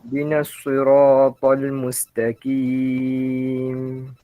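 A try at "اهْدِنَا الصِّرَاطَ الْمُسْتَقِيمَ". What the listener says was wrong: Okay, sempurnakan baris bawah sad. Ihdinas gitu.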